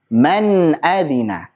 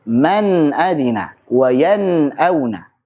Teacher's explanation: Nunnya jangan lupa dialirkan sedikit karena punya sifat tawassut.